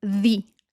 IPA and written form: ðiː (the)